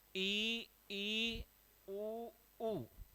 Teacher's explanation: इ ई उ उ समान मुख खुल रहा है होठों की स्थिति चेंज हो रही है